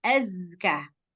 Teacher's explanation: boleh baca kalau Az salah berarti zainya enggak punya sifat saofiah jadi dia harus kuat suara desisnya